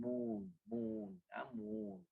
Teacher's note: But the long U, you must drag it double the time as in moon